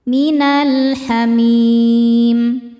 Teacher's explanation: Sebab alif lam menghadapi huruf qamariah yaitu ha. Cara bacanya lam dibaca jelas. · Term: alif lam qamariah